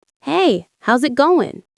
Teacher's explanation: The word is disappears, and the final G in going often softens. This is called connected speech.